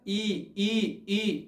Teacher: और देखिए जीभ थोड़ा क्या होती है, तालु की तरफ क्या हो जाती है, उठ जाती है। तो हस ई और धीर ई, ये दोनों का उच्चारण कहाँ से होता है, तालु से होता है। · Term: तालव्य